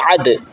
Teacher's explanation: گلے سے زور لگا کے عین پڑھیں، عین دال زبر عد، عین دال زبر عد.